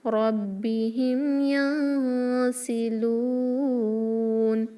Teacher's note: نون ساکن کے بعد سین اخفا ہوگا دو حرکہ غنہ کے ساتھ. لام کو 2 یا 4 یا 6 حرکہ اسٹریچ کریں گے اکارڈنگ ٹو مد العارض للسکون.